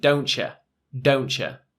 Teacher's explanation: In American English, don't you would maybe be more of a pronounced T in the contraction.